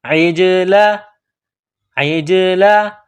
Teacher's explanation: عین کو جیم کے ساتھ ملانا ہے، جیم کے اوپر قلقلہ کرنا ہے